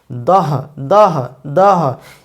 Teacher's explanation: এরপরে দ এর সঙ্গে অধ্বনি যুক্ত হয়, এর উচ্চারণ হচ্ছে দ দ অধ্বনি যুক্ত হচ্ছে। ধ ধ উচ্চারণ কীভাবে হচ্ছে, দ এর সঙ্গে হ ধ্বনি যুক্ত হচ্ছে